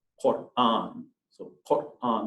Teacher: there's a little bit of the stop between the R and the A. That's that word that's called an Arabic hamza. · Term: glottal stop